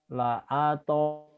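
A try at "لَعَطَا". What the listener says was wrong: Pendek.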